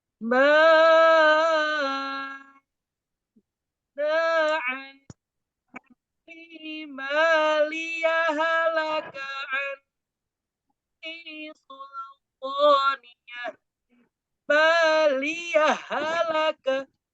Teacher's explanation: Maka hak yang pertama dihilangkan langsung masuk ke hak yang kedua. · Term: idraj